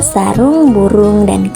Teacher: vokal u dengan proses pembentukan tinggi bawah belakang bundar